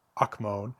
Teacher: I think the accent is on the first syllable there.